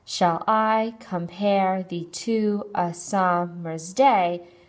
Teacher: of this line of poetry is called I invak pentameter and it consists of an unstressed and then a stressed syllable five times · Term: iambic pentameter